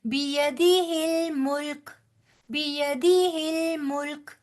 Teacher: मुल्क नहीं कहना बेटे, मुल्क। बड़ी सॉफ्टनेस के साथ मुल्क को जज़म दे के छोड़ना है, झटका नहीं देना। ये झटके वाले हरूफ में से नहीं है।